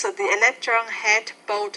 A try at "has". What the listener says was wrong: Don't forget the word has. You're not pronouncing that final S. Has. Has both.